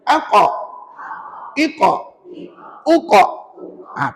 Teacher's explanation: pangkal lidah kita diangkat dan ditekan hampir ke anak tekak kita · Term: qaf